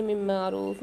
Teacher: نون ساکن کے بعد میم مشدد آ رہی ہے ادغام مال غنہ کے 4 حروف میں سے، یہاں پر بھی غنہ کر کے پڑھیں گے ادغام کے ساتھ